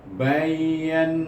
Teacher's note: Na dua panjang baca kerana dia ada alif serta huruf nun baris atas. Jadi dia menggunakan hukum asli baca dua harakat.